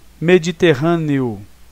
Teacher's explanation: E quando você fala, realmente o O tem a mesma força que o E. Então é um hiato.